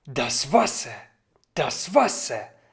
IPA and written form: das ˈvasɐ (das Wasser)